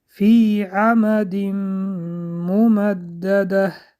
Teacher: ادغام بعد از تنوین حرف میم اومد که ادغام با غنه می باشد